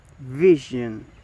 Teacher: the voicing is voice, and the place of articulation is post alveolar